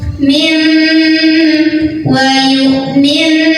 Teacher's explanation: Cara bacanya bunyi nun sukun yang tadinya kan diganti jadi bunyi mim sukun, jadi jadi bukan min tapi mim. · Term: iqlab